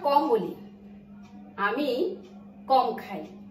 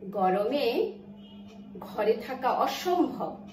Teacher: ক এবং খ যখন উচ্চারিত হচ্ছে তখন স্বরতন্ত্রী কম্পনের পরিমাণ কম, আর যখন গ এবং ঘ বলছি স্বরতন্ত্রীর কম্পনের পরিমাণ বেশি।